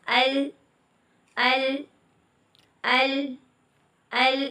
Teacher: اگلا کنارہ جو ہے نا زبان کا، وہ ہم نے اوپر والی دھاروں سے لگانا ہے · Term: لام